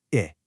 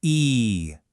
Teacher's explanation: So, short I is quick and relaxed. Long E is wide and held.